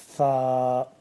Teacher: سا کو جب ہم پڑھیں گے تو دونوں دانتوں کے درمیان زبان تھوڑی سی باہر کی طرف لا کے سا کو نرمی سے پڑھنا ہے۔